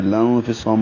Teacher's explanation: اخفا کریں گے نون ساکن کے بعد فا آنے کی وجہ سے